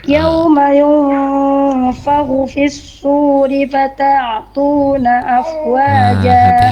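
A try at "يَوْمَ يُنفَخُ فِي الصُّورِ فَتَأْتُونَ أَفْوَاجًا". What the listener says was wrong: Hati-hati Ibu, fata itu bukan fata, hamzahnya ya. Kadang memang gitu kita terbuai dengan bacaan sebelumnya ya, sehingga kemudian kita nggak cermat di huruf hamzah ketika sukun ya. Jadi bunyinya ke ain ya.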